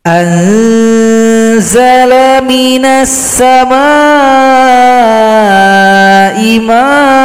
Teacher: A panjang dua ketukan, kita sendiri tambahkan alif, mad iwad.